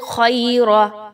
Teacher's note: की अदायगी रखनी है अल अल खरा ख ज़बर या ख या लीन एक से दो अलिफ के बराबर इसकी अदायगी रखेंगे र पर ज़बर आ गया इस र को पुर पढ़ा जाएगा